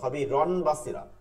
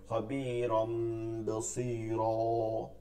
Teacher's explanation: নুন সাকিন মানে নুন সাকিনকে বা তানবিনকে মিম দ্বারা পরিবর্তন করতে হবে, প্লাস গুন্না করতে হবে